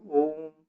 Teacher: ओ को पहले खींचा फिर मां को बोला [गला साफ़ करने की आवाज़] तो इसमें तीन गुना समय लगता है ह्रस्व स्वर का।